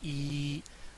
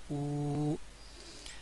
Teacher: تو کھڑا زبر، کھڑی زیر، اور الٹا پیش، ان کو مد اصلی کہا جاتا ہے. ان کی مقدار بھی دو الف کے برابر یا دو انگلیاں کھولنے کے برابر ان کو کھینچا جاتا ہے